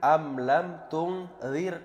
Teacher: Berharokat kasrah sebelum ra, maka itu dibaca tipis, bernama tarqiq.